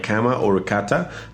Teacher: In Oregon English, the bowel in cat is very tense, sometimes almost sounding like cat. But Spanish ah should always be relaxed, very open without that tension